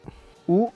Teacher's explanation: les lèvres sont très en avant la bouche est légèrement ouverte et très arrondie la langue est en arrière elle ne touche pas les dents le corps et la bouche sont relâché ou est un son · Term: le son ou